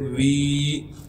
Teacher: واو کو یائی مدہ سے ملائیں گے اور واو کو ایک الف کے مقدار کھینچیں گے. واو یا زیر وی.